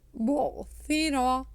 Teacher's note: your tongue will come out and the tip of the tongue will touches to the top front teeth